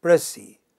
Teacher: it has two syllables. The stress is on the initial syllable.